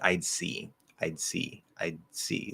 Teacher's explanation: i sort of stop that d really quick first then the s comes out